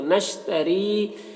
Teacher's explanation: یہاں پر را کو باریک پڑھیں گے، یا مدہ ہے، ایک الف کے برابر کھینچیں گے۔